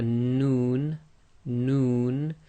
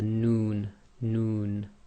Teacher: the tip of the tongue pressing on the front hard palate your your lips actually go a bit round with the noon